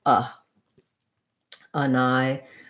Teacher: our letter a at the start when it's not stressed it doesn't usually say an a or an ah any sort of a like vowel it just says a schwa